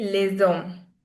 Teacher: When S connects with a vowel sound, it will produce a sound that is z. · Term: liaison